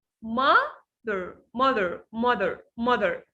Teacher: So mother here, I stress on the first part.